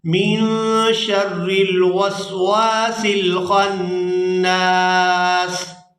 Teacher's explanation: سین پر وقف کریں گے کیونکہ آیت مکمل ہو رہی ہے تو سین کو ساکن کر دیا جائے گا